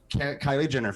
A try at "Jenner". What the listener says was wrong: No, you're saying Jenner. It sounds like Ginner.